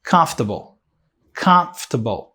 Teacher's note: A primeira sílaba é a sílaba forte